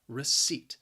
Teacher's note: The word has two syllables and the stress is on that second syllable, receipt. Now, the spelling, again, just does not match up with the pronunciation.